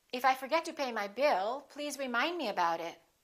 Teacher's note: in that sentence we have two focus words bill and remind